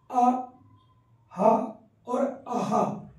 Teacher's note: यानी जब हा को बोलते हैं तो आ, हा और आहा, इसमें दोनों मिल जाते हैं, तीनों का उच्चारण स्थान कंठ ही होता है। ठीक है, इसी को काकल्य या स्वरतंत्री के रूप में भी बता दिया जाता है।